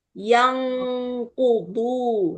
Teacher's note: Ifa jauh tuh posisi nun sukun jauh dari makhraj huruf qaf sama kaf. Maka dia bunyinya eng.